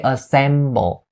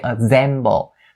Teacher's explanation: make sure you don't turn the S sound into a Z sound